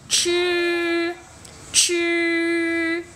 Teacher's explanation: Còn mà CH á, là phải uốn lưỡi bật hơi ra. Uốn lưỡi bên trong cái miệng tròn tròn. Chứ, chứ.